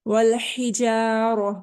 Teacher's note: वल हिजारह, हरूफ हल्की में से हलक के दरमियान वाले हिस्से से इसको पढ़ेंगे। वल हिजारह, रॉ को बोल्ड पढ़ेंगे क्योंकि रॉ के ऊपर जबर आ गई है